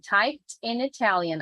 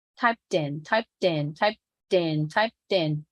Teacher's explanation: I can hear the T due to the fact that there is a vowel right after